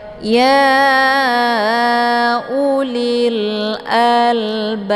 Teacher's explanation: Ya ulil al lil a ada alif lam namanya alif lam alqamariyah karena sesudah alif lam terdapat huruf qamariah yaitu hamzah. Cara bacanya alif lamnya dibunyikan secara jelas atau jelas bunyi L-nya. · Ba dibaca panjang 2 harokat karena ada alif sebelumnya harokat fathah, dinamakan dengan mad tabi'i zahiri.